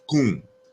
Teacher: And so that is a nasalized vowel at the end. So the M has been assimilated into the U sound.